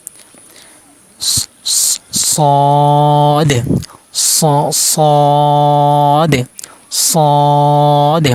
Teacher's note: সদ হরফ জিহ্বার আগা নিচে দুই দাঁতের আগার সাথে লাগিয়ে উচ্চারণ করতে হবে। সদ সদ সদ। মোটা করতে হবে, মোটা হরফ।